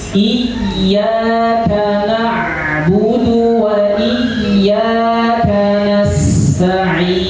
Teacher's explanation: Perhatikan di dalam lafaz iyyaka ada tasdidnya. Maka tasdidnya harus ditekan dengan kuat.